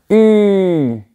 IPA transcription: y